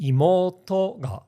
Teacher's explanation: when a particle attaches the pitch starts low it rises all the way up until the final to and then it drops in with the attaching particle